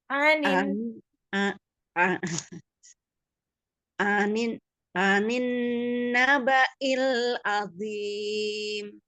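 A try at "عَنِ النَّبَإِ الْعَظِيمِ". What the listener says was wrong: ainnya juga belum sama kan dari a yang anin sama azim belum sama ya itunya. Tonnya belum sama, Masya Allah. Kan udah tahu ya maksudnya ini ainnya masih belum dapet nih.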